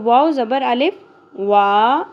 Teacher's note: یہاں آپ دیکھیں واو کے اوپر زبر اور ساتھ خالی الف ہے تو واو زبر الف وا ایک الف کے برابر کھینچا جائے گا